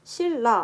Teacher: 니은이 리을로 바뀌면서 소리가 나고 있어요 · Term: 유음화